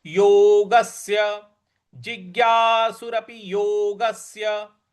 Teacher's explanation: योगस्य, जो आधा स है उस पर हमको आघात देना है।